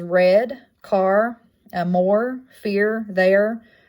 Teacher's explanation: Next liquid is the turned R, which is that upside down R. It's a voiced and a palatal liquid.